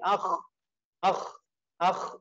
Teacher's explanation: akh itu adalah tenggorokan yang atas yang paling atas.